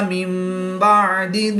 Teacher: نون ساکن کے بعد حرف با ہے تو نون کو میم سے بدل کر غنہ زمانی کر کے پڑھیں گے